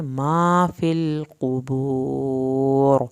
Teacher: قاف کو موٹا قاف ہے اور ہمیشہ پیش والے لفظوں پہ ہونٹوں کو گول کریں تاکہ آپ کا پیش صحیح پڑھا جائے